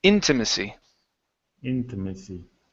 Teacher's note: Our stress is at the very beginning.